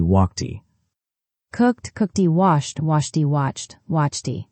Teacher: Sound one, the t sound after voiceless sounds like k, p, sh, ch. >> walked. The ed sounds like t walked.